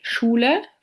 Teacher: The postalveolar fricative sh can be heard in the word Schule